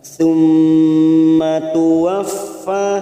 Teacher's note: mim yang bertasjid gunah musadadah kita tekan selama tiga harakat